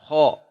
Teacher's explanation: Ho dari tenggorokan atas. Ho tebal. Ho. Tapi ketebalannya hanya isti'la, tidak sampai itbaqo.